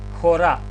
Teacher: Значи бидејќи е омикрон е самогласка мора да има спиритус. А бидејќи ова збор ќе се изговара со здив х напред, спиритусот е аспер.